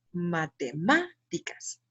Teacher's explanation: última jaja última penúltima y antepenúltima sílaba entonces son palabras esdrújulas las palabras esdrújulas se caracterizan porque la sílaba tónica recae en la antepenúltima